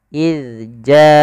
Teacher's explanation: kita ujung lidah menempel dengan gigi dari atas kita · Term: huruf zal